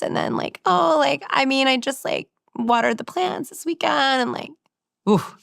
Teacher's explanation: Also, the intonation, the end of this sentence goes up.